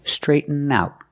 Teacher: the T at the end of out is a stop T. Straighten out. We stop the air. We don't release the T sound. We don't say straighten out.